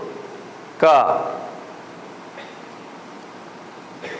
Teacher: And the first kavarga comes from the throat.